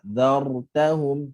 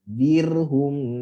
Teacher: getaran mesti ada tetapi pendek je · Okey, dia lebih jelas ketika huruf berbaris mati. Maksudnya apabila ra ni mati, maka getaran tu lebih jelas kelihatan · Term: ra mati